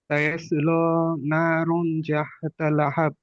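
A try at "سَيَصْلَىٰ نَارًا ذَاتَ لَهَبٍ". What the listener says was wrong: না, তুমি জাহাতা কোত্থেকে আনতেছো, আর রুন কেন পড়তেছো? এটা কি রোকার রো নাকি? এটা তো রন, এটা রন।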